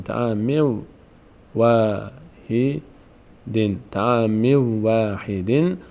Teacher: به جای نون واو تلفظ میکنیم